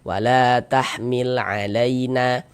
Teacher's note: Karena dia memiliki tanda baca fathah dibaca panjang. Sehingga la dibaca panjang. Mad tabi'i panjang 2 harokat.